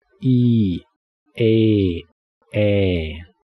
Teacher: Notice how your mouth getting wider with each vowel.